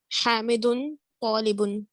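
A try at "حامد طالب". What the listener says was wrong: Excellent.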